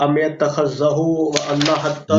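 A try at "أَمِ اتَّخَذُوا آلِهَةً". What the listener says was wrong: نو نو نو، غلط پڑھ رہے ہیں، غلط پڑھ رہے ہیں بھائی. ام اتخذوا آلہتن. ام اتخذوا آلہتن. اتخذوا نہیں ہے بھائی، اتخذوا ہوا بولا آپ نے، اتخذوا ہو نہیں ہے، اتخذوا ہے.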